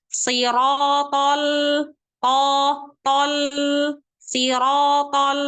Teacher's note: Huruf to tebal. To. Tebal kan? Tapi ketika masuk lam sukunnya tipiskan.